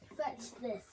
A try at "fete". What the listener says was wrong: not fetch. Fete. Fete. Like how fate is spelled, like a fate.